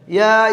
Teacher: ইয়ার উপরেও খারা জবর, মাদ্দে হারকাত, এক আলিফ টেনে পড়তে হবে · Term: মাদ্দি তবাই